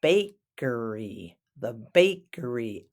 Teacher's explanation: Emphasis on the first syllable.